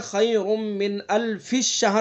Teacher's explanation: زیادہ تر لوگ اس کو من الف الشہر پڑھتے ہیں، یعنی فا کو شین میں ملا دیتے ہیں، اور یہ غلط ہو جائے گا۔